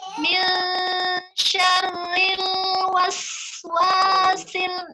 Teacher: di was itu harus dipanjangkan sinnya, namanya rokhawah